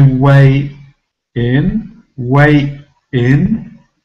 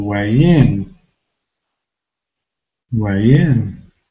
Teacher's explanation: I carry over the sound, the y sound, into the next syllable